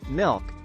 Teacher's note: in the word milk the L Sound is pronounced with the back of the tongue raised towards the soft palate